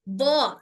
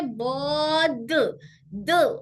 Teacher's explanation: जबान का नोक आके सामने लग रहा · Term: दाल